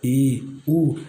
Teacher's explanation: इनमें अपना मुंह कम खुलता है, इसलिए इसको संवर्त स्वर कहते हैं।